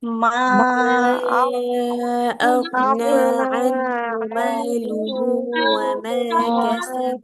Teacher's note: এই যে মাদ্দে মুনফাসিল, মাদের হরফ এর উপর ত্রিকোণ চিহ্ন, বামে হামজা, মাদ্দে মুনফাসিল, তিন আলিফ টেনে পড়তে হচ্ছে। এই ঢেউ ঢেউ চিহ্নটাই তিন আলিফ মাদের চিহ্ন, মাদ্দে মুনফাসিলের চিহ্ন।